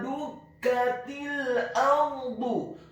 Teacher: huruf dalnya dibaca tipis, dhamma 1 harokat.